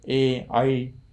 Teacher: एकार र ऐकारको कण्ठस्थ तालु स्थान हुन्छ